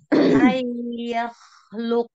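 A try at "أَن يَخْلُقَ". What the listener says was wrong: Lagi, tahan. Harus konsisten. Sama ya, panjangnya.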